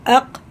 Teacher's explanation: قاف جب پڑھا جاتا ہے بڑا والا تو ہماری زبان کی جڑ جو سب سے پیچھے کا سائڈ ہے اوپر سخت حصے میں لگے گی تالو سے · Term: بڑا قاف